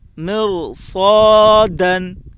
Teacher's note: رائے ساکنہ سے پہلے زیر ہے، لیکن اس را کے بعد اسی کلمہ میں حروف مستعلیہ کے ساتھ حرفوں میں سے صاد ہے، اس لیے رائے ساکنہ پر ہوگی. الف سے پہلے زبر ہے، اس لیے الف مدہ ہوگا.